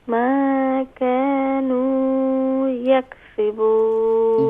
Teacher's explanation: یہاں پر جو واو ہے یہ واو مدہ ہے, اسے ایک الف کی مقدار کھینچیں گی